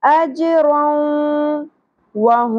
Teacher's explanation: میم ساکن کے بعد میم مشدد, تو یہاں پر بھی ہم ادغام کریں گے غنہ کے ساتھ, ادغام شفوی. وہم دونوں جگہوں پر ہا ہے, تو ہا اقصی حلق سے ادا ہوتا ہے, اس میں سانس کی آواز نہیں آنی چاہیے.